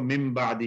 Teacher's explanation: نون کو الگ سے پروناؤنس نہیں کرتے بلکہ مم کر دیتے ہیں، 2 میم پڑھ لیتے ہیں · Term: ادغام